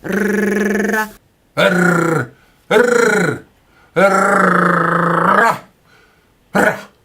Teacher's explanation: Ah, mon père et ma mère, que je vous veux de mal. Et l'air, en portant le bout de la langue jusqu'au haut du palais, de sorte qu'étant frôlée par l'air qui sort avec force, elle lui cède et revient toujours au même endroit, faisant une manière de tremblement